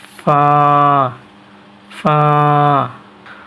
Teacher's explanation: দুই দাঁতের আগা নিচের ঠোঁটের উপরে থাকবে এবং বাতাস বাইর হবে